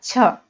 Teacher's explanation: छ जब हम बोल रहे हैं तो हकार की ध्वनि आ रही है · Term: महाप्राण